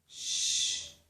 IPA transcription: ʃ